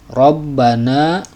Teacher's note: huruf r dibaca tafkhim atau tebal sebab berharakat fathah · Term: tabkhim